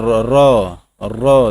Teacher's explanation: र जो लुंठित व्यंजन हो गया, जिसके उच्चारण में दोस्तों क्या करती है, जीभ तालु से लुढ़क कर स्पर्श करती है